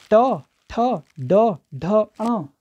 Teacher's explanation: हमारी जीभ मुड़ रही है, मूर्धन्य मुड़ रही है पीछे की ओर, आप ऐसे देखिए हमारी जीभ पीछे की ओर जा रही है, तो ये मूर्धन्य होंगे, इनका जो स्थान है वो मूर्धन्य है, ठीक है।